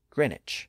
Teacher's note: And in fact, that was the original pronunciation of the word in English. But that W sound near the beginning of that second syllable was lost. · It's spelled G-R-E-E-N-W-I-C-H, but we don't pronounce the W today.